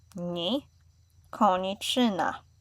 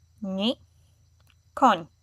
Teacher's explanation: adding the letter I is making it a little bit longer, and the letter with the accent itself, it's making a shorter sound. Still soft, but short. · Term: soft sound